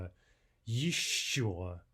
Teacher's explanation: That's our double consonant. Hold it twice as long as an ordinary sh.